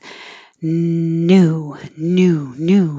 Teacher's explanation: keeping the tongue lower lets air come up the back and through the nose